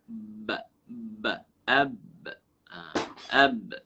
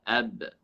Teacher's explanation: Syiddah ialah semasa kita menyebut huruf ba, mesti kita menahan perjalanan suara. Seolah-olahnya melekat suara kita.